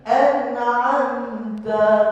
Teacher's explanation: anamta jangan dengung pula eh anamta tu semua izhar. Nun mati bertemu ain eh. Mim mati bertemu ta.